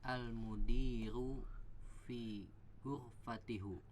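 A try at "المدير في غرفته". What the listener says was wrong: Ya, udah bener ya, fi ghurfati, tapi hu-nya dibaca jadi hi ya.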